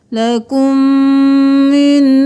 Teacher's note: میم کے ساتھ میم مل گیا، میم مشدد ہے، غنہ ہوگا